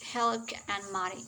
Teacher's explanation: So, for example, in the phrase milk and honey, this could be mispronounced as helk and money. Notice here that the glottal fricative and the bilabial nasal have switched position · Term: metathesis